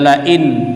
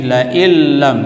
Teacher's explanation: Tidak dibaca la in, tapi la illam, langsung memasukkan dengan tidak dengung. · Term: idgham bila gunnah